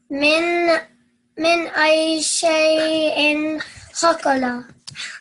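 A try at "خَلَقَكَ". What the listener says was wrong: Not khalqala. So remember, lam in the middle. Khalaqah.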